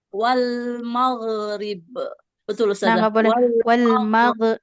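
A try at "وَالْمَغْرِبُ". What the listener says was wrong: Nah, nggak boleh wal nggak boleh ada e-nya. Nggak boleh wal maghrib. Nah, iya, jadi tahan jangan ada e-nya ya. Wal maghrib. nggak boleh koskolah.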